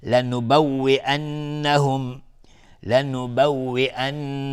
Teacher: نون مشدد 2 حرکت غنه میدیم